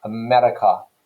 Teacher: Okay, so America, like that. So that R, the slightly rolled rhotic sound in the middle of a word like America